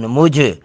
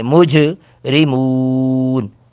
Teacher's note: جیم ساکن پر قلقلہ کریں گے